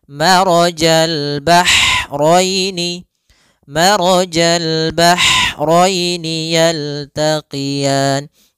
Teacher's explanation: Yaitu ha, atau bisa kita sebut dengan ha pedas, yaitu adanya aliran nafas yang kita lafalkan dan dia lembut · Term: ha kecil